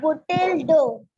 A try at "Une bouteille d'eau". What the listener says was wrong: Bouteille. Double L is silent. Une bouteille. Beta, t. It's not t. Bouteille. Une bouteille d'eau. Une bouteille d'eau.